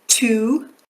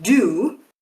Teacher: This is a practice called voicing. So in T your your vocal cords which you can feel here around your Adam's apple they don't do anything but for the D sound they vibrate.